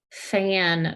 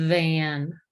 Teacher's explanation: So f and v, same place, one's voiced, one's unvoiced. V, vibrates your teeth because it's a voiced sound.